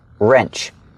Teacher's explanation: The W is silent, so it's pronounced with the R sound first.